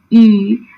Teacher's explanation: when you say e it is slightly spread